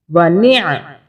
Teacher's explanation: یہ عین کو حلق سے بولیں گے